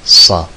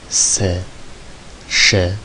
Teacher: Kalın harflerde A diye, ince harflerde E diye okutuyor. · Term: fetha